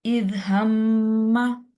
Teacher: नून और मीम की साउंड को आप नाक में ले जाएंगे, एक अलिफ के बराबर उसको लंबा करेंगे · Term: गुन्ना